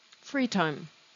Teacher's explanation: The stress is on the word free.